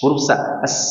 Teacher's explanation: lebih jelas ya, karena dia menempel dengan gusi gigi seri bawah. Nah, sofir disebut dengan sofir. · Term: sifat sofir